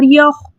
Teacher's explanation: अक्सर लोग पढ़ देते हैं यखदाऊना, ऐसे अजीब, ऐसे नहीं पढ़ना, यख यख, ठीक है, इसके मखरज में रोक देना है। और इसका खा का जो मखरज है वो क्या है? अदना हलक, यानी हलक का बिल्कुल शुरू का